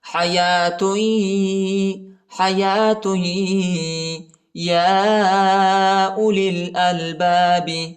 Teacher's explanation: یا پر کھڑا زبر اور چھوٹا مد ہے، اس کو تقریباً 2-3 سیکنڈ تک کھینچیں گے. ٹھیک ہے، وہ نہیں پڑھا جاتا اور یا بھی نہیں پڑھا جاتا.